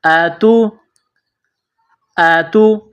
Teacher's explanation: چھوٹی تا، اس کو باریک پڑھیں گے